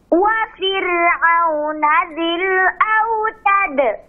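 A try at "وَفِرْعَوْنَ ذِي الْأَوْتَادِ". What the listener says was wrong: Autad. Panjangkan.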